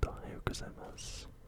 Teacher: It's important that the U at the end of mas is not pronounced.